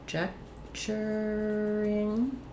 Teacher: Stress is on the ject here, so my letters C-O-N are going to have the sound, the schwa, unstressed